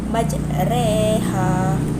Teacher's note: imalah ini menyembunyikan baris fathah ke arah kasrah sehingga bunyinya menjadi i. Menurut Imam Hafs, hanya ada satu bacaan yang dibaca imalah, iaitu pada surah Hud ayat 41.